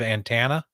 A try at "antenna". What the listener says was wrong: I feel like you're just mostly over pronouncing the T